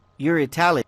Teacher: The speaker was sure, so he didn't ask a real question. Falling intonation.